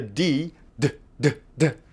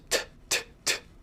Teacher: do I vibrate my vocal cords then I say a d do I not vibrate them then I say a t so this is a difference in voicing as we call it